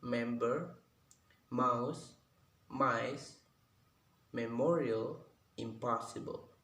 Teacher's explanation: Lalu yang kedua ada bilabial nasal, yang dimana ini suara bilabial tapi menggunakan nasal, itu suara dari hidung